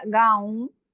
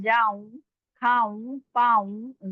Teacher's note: नून गुना नाक में आवाज जा रही है लास्ट में आ रहा है